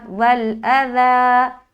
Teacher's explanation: حمزہ زبر آ, ذال کھڑا زبر ذا, ایک الف اور نرمی کے ساتھ